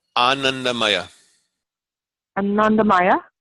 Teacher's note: in sanskrit there's a flow in ananda maya you actually have AA is a long ah and then Nunda is a long syllable but a short sound and then the rest are short syllables it's a little tricky